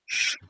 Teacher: It's actually completely closed off on the sides. It's just down the center channel that we have that fricative opening. · So for example, the sh sound, when I say the sh, and I'm kind of emphasizing it here, I can feel the sides of my tongue pressing against my upper teeth. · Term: central consonant